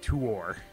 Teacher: the way he pronounces it he like separates it into two syllables almost